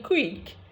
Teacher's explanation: And as a bilabial approximant occurring with a velar plosive, its influence rubs off on the velar plosive. Okay, now we now say that velar plosive k occurring with w has become labialized